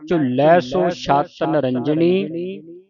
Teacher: ਝੁਲੈ ਪਾਠ ਇਹ ਕੱਸ ਕੇ ਹੈ ਅਧਿਕ ਲਾ ਕੇ ਉਚਾਰਨ ਕਰਨਾ